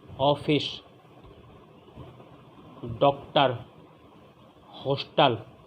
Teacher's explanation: कंठ ओष्ठ्य, गला भी और होंठ भी